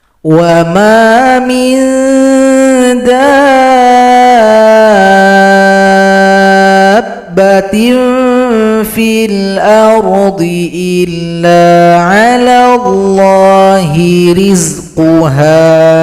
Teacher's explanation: Di sini ada mad lazim mutsaqqal kalimi, panjangkan dulu dal 6 harokat atau 6 ketukan baru tasydid pada huruf ba